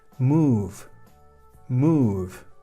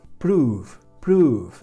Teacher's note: Recordad, vocal O seguida de consonante más una E. En este caso la vamos a pronunciar como una U larga, U.